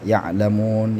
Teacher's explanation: Nun mati bertemu dengan lam, idgham bila gunnah, ya'lamun ya. Mad arid lis sukun, panjang 6 harakat